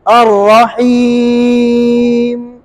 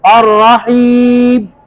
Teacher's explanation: मीम के अंदर जब आप साकिन करेंगे तो मीम में गुन्ने की आवाज पैदा करेंगे थोड़ी सी, और रहीम। अगर ये गुन्ने की आवाज नहीं पैदा करेंगे तो ये बा बन जाएगा, मीम क्या बन जाएगा, और रहीम, देखो बा बन गया ना।